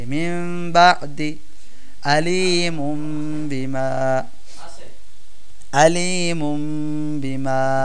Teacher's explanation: যেমন দেখেন, মিম বাদি আলিমুম বিমা, এখানে ইকলাব হয়েছে কারণ নুনে সাকিন, দেখছেন তো নুনে সাকিনের পরে বা আসছে ইকলাবের হরফ, এই কারণে নুনে সাকিনটাকে আমরা ছোট্ট একটা মিম দ্বারা পরিবর্তন করে গুন্নার সহিত পড়তেছি